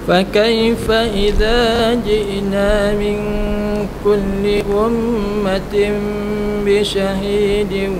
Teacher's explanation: Tanwin bertemu dengan ba. Hukum dia iqlab kan? Kita bunyi mim dalam ba.